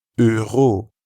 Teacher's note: that French r sound that comes from the back of the throat